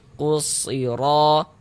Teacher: Karena cara membacanya tuh dibaca idgham dia. Huruf lamnya itu dibaca idgham nih. Jadi dari ku langsung masuk ke huruf shad ini. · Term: alif lam syamsiyah